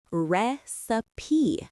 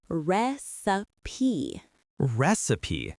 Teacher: The vowel sound in the middle is the I sound, as in sit or kit.